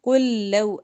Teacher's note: لام کے بعد لام آ جائے تو ادغام، دونوں لام کو اکٹھا پڑھیں گے ، پہلے لام کو دوسرے کے ساتھ ملا کے، ٹھیک ہے،